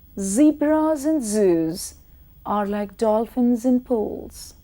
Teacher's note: vibration of the vocal cords involved, and hence you would hear Z, which is like the buzzing of a bee.